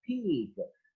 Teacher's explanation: the aspirated variety of p as in the word peak